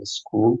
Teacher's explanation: So rather than in English we say school, but school in Dutch is school. So so in English, basically we have S, which is basically a fricative, followed by a plosive, which is ke. But in Dutch, it is just two fricatives next to each other.